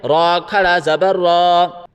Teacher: پیش کب، را کھڑا زبر را، را کے اوپر کھڑا ہے، کھڑا کو ایک الف کی مقدار کھینچ کے پڑھا جاتا ہے